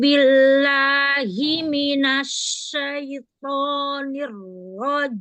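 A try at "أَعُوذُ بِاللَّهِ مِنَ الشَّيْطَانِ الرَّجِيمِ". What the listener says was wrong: Ringankan lagi hamzah di awal. A, a, a'udzu, a'udzu, a. Ringankan lagi.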